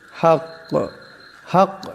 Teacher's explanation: যদি দম সারেন কাফ সাকিন হয়ে যাবে, একটি আওয়াজের টক্কর খাবে, কাফ কলকলা হরফ।